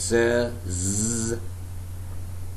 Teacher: Adam's apple, which vibrates when you produce the voice sounds such as z, z